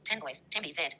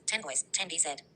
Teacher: With pause, 10 boys, 10 bz. No assimilation happens because the pause blocks the rule. · Without pause, 10 boys, 10 bz. N becomes M before B. With pause, 10 boys, 10 bz.